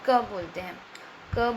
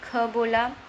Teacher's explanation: तो अल्प प्राण में हम क बोलते हैं, क बोला, हमने ख बोला, तो क और ख को अगर मैं कंपेयर करूं तो क में जो है कम वायु निकलती है, ख में ज़्यादा वायु निकलती है। तो इसमें अल्प प्राण क्या हुआ, क।